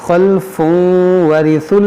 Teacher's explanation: تنوین کے بعد واو, یہاں پر بھی ادغام کریں گے